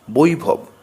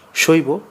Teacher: এই বর্ণটিকে সান্ধাক্ষর বা যৌগিক স্বর বলে কারণ অ প্লাস ই বা ও প্লাস ই সংযুক্ত হয়ে এর উচ্চারণ হয়